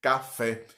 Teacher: a palavra café observe que a sílaba tônica é o fé inclusive vem com acentuação gráfica também não é isso café mas